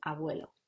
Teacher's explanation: fricativo bilabial sonoro, como en abuelo